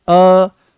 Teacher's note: ये अर्ध विवृत्त हैं। अर्ध विवृत्त का मतलब यह है कि मुख यहां पर आधा खुलेगा।